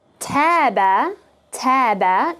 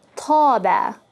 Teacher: notice is pronounced with the frontal a, as in bad